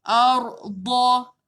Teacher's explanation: Makhraj da, sisi lidah bawa ke langit atas.